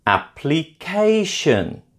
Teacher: Application is stressed on the third syllable.